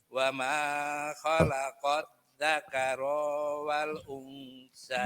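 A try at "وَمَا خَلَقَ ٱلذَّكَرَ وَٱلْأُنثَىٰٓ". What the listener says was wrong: Ayo, ronya nggak boleh panjang. Dzakarowal.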